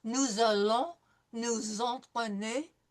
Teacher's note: It's just nice to understand the flow when you have a nous followed by a vowel. There's going to be a liaison, and it's going to be not an S sound, but a Z sound.